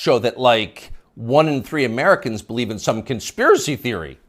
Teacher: You'll notice the upspeak, the rising inflection at the end of the sentence. That's a familiar tick in Brooklyn.